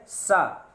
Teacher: तो आपके हवा जो निकलेगी तो वो दांतों से आकर के टकराएगी